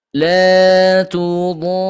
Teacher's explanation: Yang namanya mad lazim sudah tentu dibaca 5 sampai dengan 6 harokat. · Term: mad lazim mutsaqal kalimi